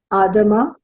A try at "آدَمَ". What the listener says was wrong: Very good.